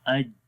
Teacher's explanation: زبان کا درمیان والا حصہ جب تالو کے درمیان والے حصے کو ٹچ کرے گا, وہ آپس میں ملیں گے, تو اس وقت جیم پڑھا جاتا ہے